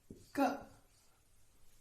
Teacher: Or when we say K, in this sound the flow of air is stopped by the back of the tongue and the soft palate that we call as velum